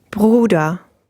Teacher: Because it contains both kinds. You get the gurgling R sound at the beginning and the open R at the end.